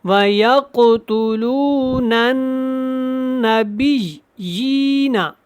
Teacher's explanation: نن کر کے پڑھیں، یہ الف اور لام کو نہیں پڑھنا، نون نون زبر نن پڑھیں گے